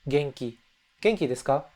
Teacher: So it's kind of like an English NG sound to it. G-E-N-K-I, but that N has a soft G attached to it.